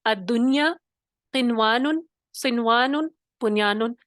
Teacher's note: اچھا, قنوان میں دیکھیے نون ساکن ایک ہی کلمے میں آیا اور پھر کیا ہوا, حروف یومن میں سے واو آ گیا تو کیا ہوا, ہم نے یہاں پہ غنہ نہیں کیا, ادغام نہیں کیا, ہم نے کیا کیا, ظاہر کر کے پڑھا, اظہار مطلق ہو گیا.